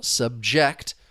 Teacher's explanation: To subject is the verb. The stress is on that second syllable.